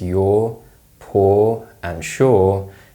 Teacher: the uh sound is increasingly replaced with the or sound in high frequency words and the pronunciation of words such as your poor and sure